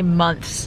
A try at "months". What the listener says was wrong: Because you gotta pronounce the TH. Months.